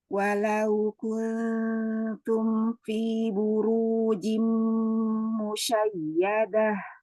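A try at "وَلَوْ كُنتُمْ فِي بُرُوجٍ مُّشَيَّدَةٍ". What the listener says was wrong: Tebalkan sedikit lagi, Ro.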